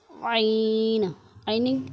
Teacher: عین کو حلق کے درمیان والے حصے سے ادا کریں گے۔ ہا اور عین حلق کے درمیان والے حصے سے ادا ہوتے ہیں۔